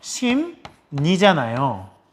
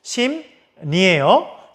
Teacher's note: 심리에 받침 미음에 리을이 만났더니 그 리을이 니은으로 바뀐 거죠